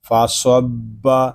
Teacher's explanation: آگے با مشدد ہے، اس کو جماؤں کے ساتھ ادا کریں گے